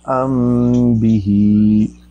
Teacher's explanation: होंठों को आराम से आहिस्ता से बंद करते हैं, 2 हरकतों के बराबर देर लगाते हैं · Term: इख्फाए शफवी